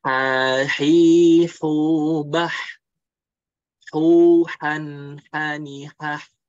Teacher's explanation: Jadi huruf H itu di tengah tenggorokan.